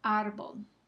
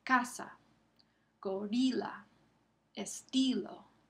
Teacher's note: La penúltima sílaba es la que recibe el énfasis. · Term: palabras llanas